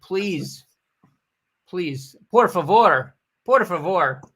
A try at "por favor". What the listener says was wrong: You don't roll your R's at all?